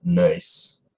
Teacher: in places like Boston and also around parts of Louisiana that speak non-rhotically, you have a higher off-glide